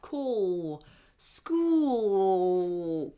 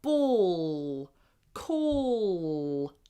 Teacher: Obviously, we can't touch the whole of the top of our mouth with our tongue, but if you try and you try to push it up, you will make a dark L.